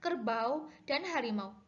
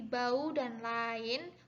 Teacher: Apabila ada dua buah vokal berurutan, namun yang pertama terletak pada suku kata yang berlainan daripada yang kedua, maka tidak ada diftong. Jadi vokal au dan ai pada kata seperti bau dan lain bukan diftong.